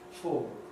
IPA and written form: fɔːɫ (fall)